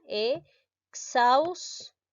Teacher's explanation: la mayor fuerza de voz lleva en la sílaba en la sílaba xaus